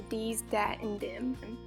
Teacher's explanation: they replace the voiced th with the stop consonant d, turning it into dees, dat, and dim.